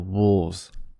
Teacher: the the there's a the s becomes voiced in wolves and you might hear a little bit of lengthening as a vowel and uh clear voicing on the plural wolves